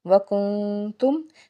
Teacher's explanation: نون ساکن کے بعد تا ہے، اس کا مطلب ہے کہ قاعدہ ہے اخفا کا، تو ہم نے آواز کو ناک میں چھپانا ہے۔ کنتم، کنتم میں میم جو ہے وہ ساکن ہے اور اس کے بعد آگے حمزہ آ رہا ہے، تو یہاں پہ اظہار شفوی ہوگا، غنہ نہیں کریں گے۔